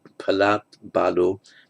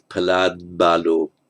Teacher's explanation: the voicing of the b affects the preceding t and voices it